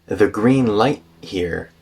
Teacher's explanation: and so the T in light turns into a glottal stop.